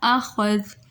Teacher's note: اب ہم نے اخذ میں کیا کیا کہ ہم یہاں چونکہ یہاں پر ایک ہی اعراب ہے، ایک زبر ہے، تو ہم یہاں پر جب وقف کریں گے تو اس وقف کی صورت میں جو زبر ہے وہ ختم ہو جائے گی اور یہاں پر ساکن آ جائے گا